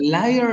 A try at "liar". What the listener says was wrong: is with an A, Liar. Liar. Lia, not E, but A, liar.